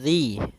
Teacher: makhrajnya adalah ujung lidah kita menempel dengan gigi seri atas, sehingga atau bisa kita gigit sedikit zi gitu ya. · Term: huruf zal